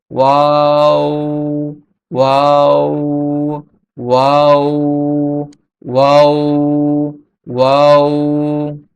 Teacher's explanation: যখন দুইটা ঠোঁট গোল রাখা অবস্থায় সামান্য খোলা রাখা অবস্থায় ওয়াও হরফটি উচ্চারিত হবে। দুই ঠোঁট গোল করে সামান্য খোলা রেখে উচ্চারিত হয়।